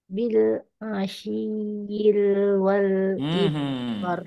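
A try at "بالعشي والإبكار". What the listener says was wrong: jangan yil. Panjang. Kalau yang ini tidak ada tanda panjang. Kalau Ibu mau dibaca panjang, seharusnya kayak gini tulisannya.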